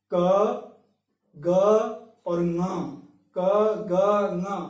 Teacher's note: मेरे मुंह से प्राणवायु तो, हवा तो निकल रही है, लेकिन वो इसको प्रभावित इतना नहीं कर पा रही है, अर्थात अल्प, थोड़ी मात्रा में हवा निकल रही है